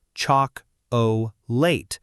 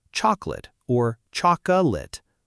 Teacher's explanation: The correct way is to relax the unstressed vowels into a schwah,